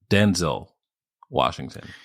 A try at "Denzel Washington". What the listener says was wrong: Not Denzel. The emphasis is on the first part.